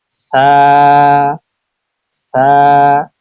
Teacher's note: জিহ্বার আগা সামনের উপরের দুই দাঁতের আগার সঙ্গে লাগিয়ে উচ্চারিত হয় সা